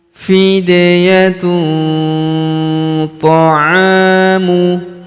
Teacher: Kemudian tanwin un huruf tun bertemu huruf th. Maka tanwin unnya melebur ke huruf th. Kita dengungkan dan kita samarkan. Kita tahan dengungnya dua sampai harakat.